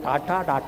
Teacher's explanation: നാവിന്റെ മൂർധാവ് അണ്ണാക്ക് കുത്തിപ്പറയുന്ന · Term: മൂർധന്യം